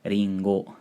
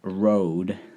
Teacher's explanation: Those R's, your tongue is moving quite far forward, versus think of an English R like road, and your tongue isn't in that front position. It's shifted a lot farther back in your mouth.